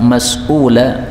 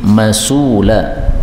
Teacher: ini hamzahnya Boleh dihapus sehingga menjadi masula